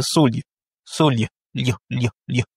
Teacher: va venir mouiller le L pour le rendre un peu mou dans la prononciation. C'est ce que c'est ce qu'on appelle la palatalisation.